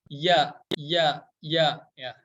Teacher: nah ketika membacakan huruf ya pasti akan kerasa banget ya bahwa makhraj huruf yaitu tempat keluar huruf yaitu dari tengah lidah kita ya ini tanggal lidah nempel ke tengah langit-langit apa imbalkan seperti